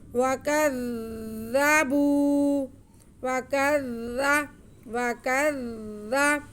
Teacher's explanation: काफ़ारू काफ़ारू वल्लज़ीन कफ़रू वल्लज़ीन कफ़रू वकज़्ज़बू, जी वाव पे ज़बर, काफ पे भी ज़बर और ज़ाल मुशद्दद। काफ का ज़बर हम ज़ाल के साथ थोड़ा रुक के मिलाएंगे क्योंकि ज़ाल मुशद्दद है तो शद्दद आ सके।